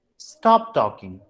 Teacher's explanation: mostly this goes to command when we give command and all this falling tone is used